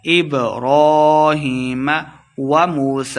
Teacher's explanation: کر کے پڑھیں گے، را کے اوپر کھڑی زبر ہے، ہیم یا مد ہے، دو حرکات لمحہ کر کے پڑھیں گے